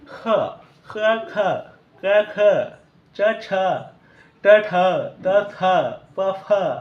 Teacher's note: उच्चार म्हणजे थोडासा ह चा वापर करून